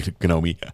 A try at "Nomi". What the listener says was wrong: I think the G is uh not pronounced